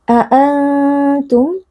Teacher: ada nun sukun yang berjumpa dengan huruf ta dibaca dengan dengung yang disamarkan Antum a mim sukun yang bertemu dengan Hamzah adalah izhar syafawi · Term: ikhfa Hakiki, ikhfa hakiki